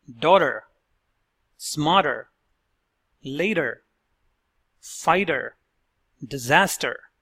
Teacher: when T is in the middle of the word between two vowels it has the sound of a fast D